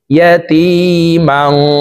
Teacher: তানউইনের পরে ইকফার 15টি হরফের ভিতরে একটি হরফ ফা আসছে, এই কারণে এই তানউইন ওয়ালা মিমটি নাকের ভিতরে লুকাইয়া গুন্নার সহিত পড়ব।